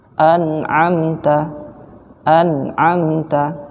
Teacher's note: ada dengungnya tapi sedikit ya tidak boleh juga kita tahan terlalu lama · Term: nun sukun